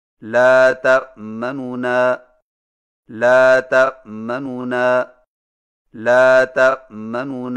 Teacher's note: دو نونوں سے پڑھیں لیکن پہلے نون کی پیش کو جلدی سے پڑھیں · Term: اختلاس